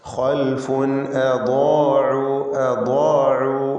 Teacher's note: ബാദിനും അലിഫിനും തഫ്ഖീം കൊടുക്കണം, തടിപ്പിച്ച് രണ്ടിനെയും ഉച്ചരിക്കുക. ബാദ് ഇസ്തിഅലാൻ്റെ അക്ഷരമാണ്, അതിനെ ദീർഘിപ്പിക്കുന്ന അലിഫിലും തഫ്ഖീം വേണം.